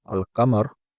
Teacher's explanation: Lam is pronounced in the word al-Qamar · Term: moon letters